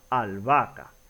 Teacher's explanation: la h como no se pronuncia no tiene un sonido no se toma mayormente en cuenta en este caso es como si estuvieran juntas la doble a